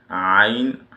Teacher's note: The middle of the throat is the makhraj of ayn, just to go above ha, ayn, ha.